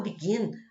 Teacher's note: Já o begin, a tonicidade está na última sílaba. E quando está a tonicidade na última sílaba, aí sim, terminou em consoante, vogal, consoante, ele precisa dobrar, tá bom?